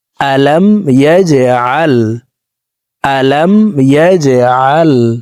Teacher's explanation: জিম কলকলার হরফ নিচের দিকে ধাবিত করে ধাক্কা দিয়ে উচ্চারণ করব